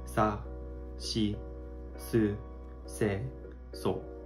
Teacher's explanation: The front part of your tongue flicks off the front part of your mouth.